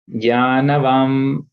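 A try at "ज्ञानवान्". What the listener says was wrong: You're saying, so Janmanam ends with the M, but Jnanavan ends with the N. Van, like Bhagavan, yeah. Yeah, those first two words end with a nam, and then the second one is doesn't end with an M, so it's a little change right there.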